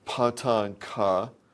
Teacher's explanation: these voiceless aspirated stop consonants, are produced by spreading the vocal folds. And that spreading delays vocal fold vibration in a following vowel. And we'll be looking at that delay.